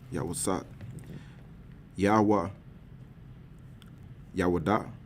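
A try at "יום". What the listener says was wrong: Yawam. M there. That ending in characters M. Yawam. Yeah, you read Yawam twice.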